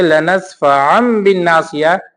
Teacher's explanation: کیوں؟ اس لیے کہ تنوین کے بعد جب با آئے تو اس کی آواز میم ساکن کی آواز جیسی ہوتی ہے، یعنی ہم اس کو میم سے بدل دیتے ہیں۔